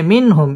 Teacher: ইজহার গুন্নাহ ছাড়া স্পষ্ট করে পড়তে হবে